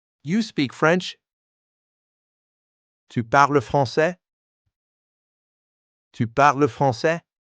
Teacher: First way, rising intonation. Same words, just raise your voice.